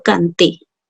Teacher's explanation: por efecto de la t se va a pronunciar dental